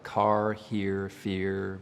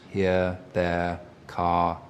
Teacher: Rhotic means we pronounce the R after vowel sounds, words like car, here, fear. Non-rhotic accent would not pronounce those R's.